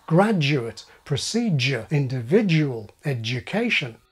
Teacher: D and yod coalesce to form postalveolar J